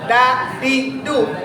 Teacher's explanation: dal ujung lidah ditempelin ke langit-langit atas